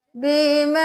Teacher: مد ہے 5 انگلیوں کے برابر کھینچے